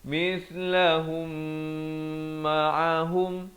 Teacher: mim mati bertemu mim idgham mislan saghir kena panjang 2 harakat